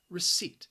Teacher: the spelling again just does not match up with the pronunciation there is a silent P in there you are not going to hear that P